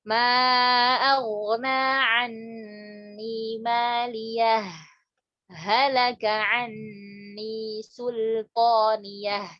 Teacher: Jadi nggak boleh didugumkan. Harus kita saktahkan, yaitu berhenti sejenak tanpa mengambil nafas.